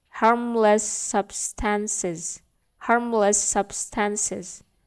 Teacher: Jadi S-nya di sini itu digabung, teman-teman. Kata dengan ending huruf S dan juga ketemu dengan kata dengan awalan huruf S.